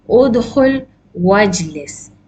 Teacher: You will drop the hamzatul wasl when you are reading together.